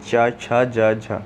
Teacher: चा छा जा झा, ये आपका तालव्य व्यंजन में आते हैं